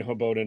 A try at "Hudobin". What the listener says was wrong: Hudobin. It's the D before the B.